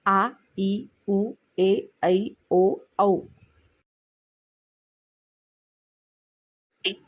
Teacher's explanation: या स्वरांचा उच्चार करण्यात जास्त वेळ लागतो म्हणून त्यास दीर्घ स्वर म्हणतात